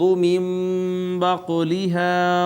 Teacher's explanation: نون ساکن کے بعد با آئی، با نے اس کو چھوٹی میم سے اقلاب کر دیا